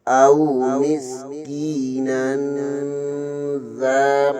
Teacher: مسکی نون دو زبر کے آگے یہاں پر زال ہے یہاں پر بھی اخفا ہوگا